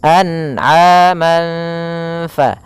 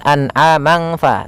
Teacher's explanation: fathatain bertemu dengan huruf salah satu huruf ikhfa yaitu huruf Fa maka cara membacanya samarkan suara tanwinnya atau suara nunnya kalau di sini tanwin berarti samarkan kepada huruf fa anaman fa